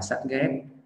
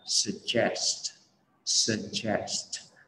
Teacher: có âm triệt mà âm cuối lại là một cụm phụ âm st. Đó, cho nên là khi mà mình đọc mình hay bị bỏ cái âm s ở cái đuôi st, đọc là sắt ghét.